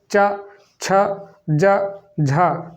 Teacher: च छ ज झा, तो कहाँ से हो रहा है, तालु से हो रहा है, ठीक है। अब आपको तालु तो पता नहीं तालु क्या है, मूर्धा क्या है।